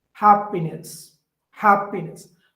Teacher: the initial one is stressed the other two are unstressed so here the code to remember this is dum da da